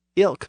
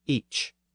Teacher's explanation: the difference between the k sound of the North and the softer CH sound of the South